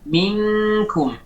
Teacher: karena lisanul mizmar itu tidak kembali ke belakang, maka otomatis tidak ada penyempitan di dalam tenggorokan. Tidak ada penyempitan. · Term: ikhfa nun sakinah